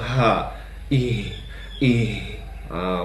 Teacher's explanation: h besar itu berada di pangkal tenggorokan ya teman-teman kalau H kecil berada di tengah tenggorokannya · huruf ha itu adalah huruf rakhawah yaitu mengalirnya mengalirnya suara sehingga ketika kita mengucapkan huruf ha maka Mengalirlah suara kita